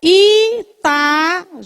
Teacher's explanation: Está formando o hiato do A com o I.